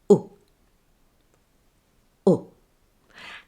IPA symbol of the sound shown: ʊ